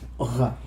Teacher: a voiced guttural fricative, just like in Portuguese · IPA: [ʁ]